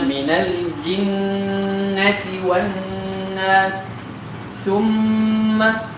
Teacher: di situ dengungnya mim dan nun lebih jelas karena keduanya dalam keadaan bertasydid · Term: Gunnah yang paling sempurna